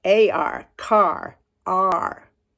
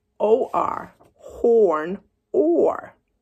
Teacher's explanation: Notice how my mouth goes ah when I say R, and or makes a round circle when I say or. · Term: R control vowels